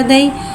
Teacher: यालिन को बगैर खींचे बगैर झटके दे नरमी से मारूफ पढ़ेंगे